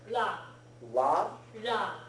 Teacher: it is halfway between your L and your R